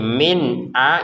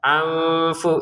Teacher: Nun sukun bertemu hamzah baca dengan jelas. Nun sukun bertemu fa baca dengan samar.